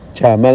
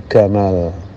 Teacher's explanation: Untuk di Mesir, jim itu diucapkan dengan huruf G.